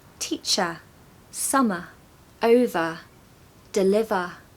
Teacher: ER endings tend to also be a schwa